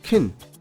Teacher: the word can got reduced to simply kin